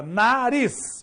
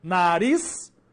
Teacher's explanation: Tem 2 sílabas e tem a última sílaba sendo a mais forte. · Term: oxítona